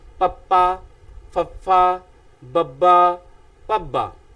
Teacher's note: ਉੱਪਰਲਾ ਬੁੱਲ ਹੇਠਲੇ ਬੁੱਲ ਦੇ ਨਾਲ ਜਦੋਂ ਟਕਰਾਉਂਦਾ, ਹਵਾ ਇੱਕੋ ਦਮ ਮੂੰਹ ਵਿੱਚੋਂ ਬਾਹਰ ਨਿਕਲਦੀ ਹੈ, ਤਾਂ ਉਸ ਸਮੇਂ ਜਿਸ ਧੁਨੀ ਦਾ ਉਚਾਰਨ ਕੀਤਾ ਜਾਂਦਾ ਹੈ ਉਸ ਨੂੰ ਅਸੀਂ ਦੋ ਹੋਂਠੀ ਵਿਅੰਜਨ ਆਖਦੇ ਹਾਂ।